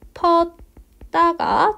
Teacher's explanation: 앞에 있는 디귿의 영향을 받아서 뒤에 있는 디귿이 된소리 되기가 되었습니다.